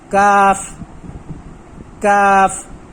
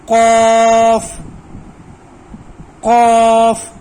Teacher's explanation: اس کو باریک پڑھنا ہے لیکن باریک یہ پڑھنا ہے کاف کاف، اور اس کو موٹا پڑھنا ہے قوف قوف